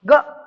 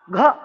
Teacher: ग कम अल्प, घ ज्यादा वायु महा